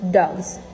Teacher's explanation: a plural S becomes Z after voiced consonants